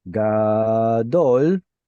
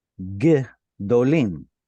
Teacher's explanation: just by shifting the stress from gadol over to gdolim, it drops to a shva